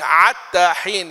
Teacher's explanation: عتى العين مكان الحاء في بعض المواضع موجودة في اللغة